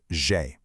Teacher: Just perfectly smooth, kind of like the name Jay, but with a soft buzzing zh sound.